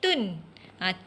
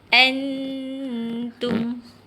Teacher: Huruf mim untuk mulut sebut tu sama-sama mim. Bila mim di hujung mim tanda sukun, jadi kena tutup mulut bila berhenti bacaan itu